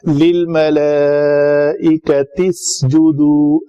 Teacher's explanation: حمزہ وصلی اپنے وصل کلام میں اس کی حرکت حذف ہو جاتی ہے